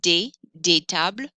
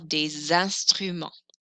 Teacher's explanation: Notice you don't normally hear the S on des tables, unless the next word starts with a vowel